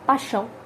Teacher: A gente não fala o som do I quando pronuncia, quer seja rapidamente ou aí no dia a dia, por conta do sotaque esse I. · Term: semivogal